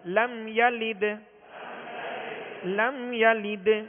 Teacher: دال ساکن ہے، دال کون سے حروف میں سے؟ حرف قلقلہ، حروف قلقلہ میں سے، لہذا یہاں قلقلہ کریں گے